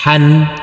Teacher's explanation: Huruf H yang berfathah tanwin jangan lupa dikasih akhiran huruf N. Karena huruf H ini huruf H bertanwin.